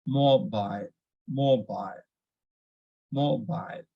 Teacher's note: Similarly, in mobile also, we can see it is ending with ILE. So it should, we need to stress on MO